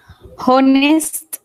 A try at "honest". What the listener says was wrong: Honest, without H. Honest.